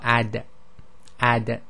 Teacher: when you say the da the tip of the tongue is actually where the top of the teeth touch the gums · this is not um aspirated so you don't let air out